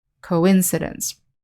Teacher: in the noun forum we have the word coincidence and the stress is on the second syllable